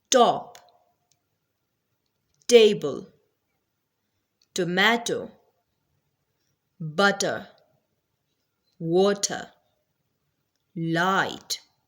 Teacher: Third plive or stop sound is t. T which is a voiceless sound. It means that there is no vibration of vocal cords while producing this sound.